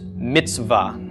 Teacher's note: the ts and the v are sort of just running into each other. There's no vowel sound in between them.